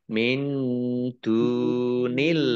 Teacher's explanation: nun sukun bertemu dengan huruf dal bacaan ikhfa dibaca samar-samar